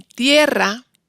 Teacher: Ahora si recordamos los casos anteriores, el que hemos visto antes, en tierra, la IE es tónica, por eso si tenemos el diptongo